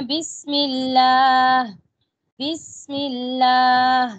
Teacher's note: آواز بہت نرمی کے ساتھ جاری رہی. سین کی آواز جاری ہے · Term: رخوہ